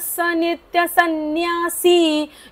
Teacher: य च नंतरचा विसर्ग पुढे स आहे म्हणून बोलायचा नाहीये